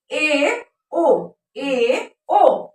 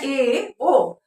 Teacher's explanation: अब हम जानते हैं कि अर्धसंवृत स्वर किसे कहते हैं, जिन स्वरों के उच्चारण में मुख द्वार आधा बंद रहता है। स्वरों के उच्चारण में मुख द्वार आधा बंद रहता है उसे हम क्या कहते हैं, अर्धसंवृत स्वर कहते हैं। हाफ क्लोज रहता है उसे हम अर्धसंवृत स्वर कहते हैं।